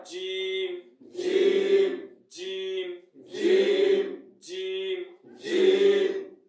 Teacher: এই জিমটা উচ্চারণ হয় জিহ্বার মধ্যখান আর সাথে উপরে তালুক থাকবে। জিহ্বার মধ্যখান উপরে তালুক থাকবে।